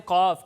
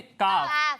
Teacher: قاف کو پر پڑھتے ہیں اور کاف کو باریک پڑھتے ہیں